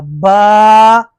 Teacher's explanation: دونوں ہونٹوں کے تر حصے سے، جی ہاں، جب ہم ہونٹ بند کرتے ہیں نا تو ہمارے ہونٹ جب ملتی ہیں تو ان میں جو تری سی ہوتی ہے، جو تری کے ساتھ بند ہوتے ہیں، ان کو آپس میں ملانے سے یہ حرف ادا ہوگا با۔